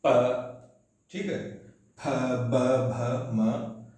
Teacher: इसके बाद ओष्ठ, ऐसी ध्वनियां जिनके उच्चारण में हमारे जो होंठ हैं या तो बेटा आपस में अचानक सट जाते हैं अवरोध करने के लिए, या वायु को अवरोध करके फिर छोड़ते हैं, यानी सट के अचानक खुलते हैं